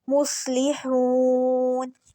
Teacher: مصلحون، سواد کے اوپر بھی ساکن ہے، سواد نہیں ہلے گا۔ سواد جو ہوتا ہے وہ موٹا پڑھا جاتا ہے، اور سیٹی، سواد میں سیٹی ہوتی ہے، جس طرح سین میں سیٹی ہوتی ہے اسی طرح سواد میں بھی سیٹی ہوتی ہے، تو یہ موٹا پڑھا جائے گا۔